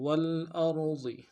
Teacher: حمزہ کو را کے سامنے لانا ہے، را کو موٹا ادا کریں گے، ضاد کو موٹا ادا کریں گے